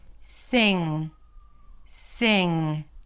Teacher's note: it is one consonant that is produced in the back of the mouth. · Basically, the NG is a combination of the N sound. So, it has that nasal quality because the air is coming out through the nose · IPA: sɪŋ